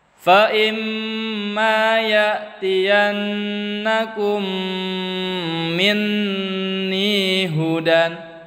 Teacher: Ya'tiyannakum, nya ditahan tuh, ya. Dengung 2 harokat.